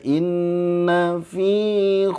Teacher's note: Fi panjangnya dua harakat enggak boleh dilamain diayun aja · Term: Mad Thobi'i, 2 harokat